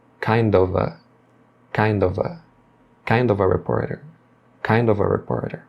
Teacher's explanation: eles vão emendar o D final de kind com o O de of e depois o F com o A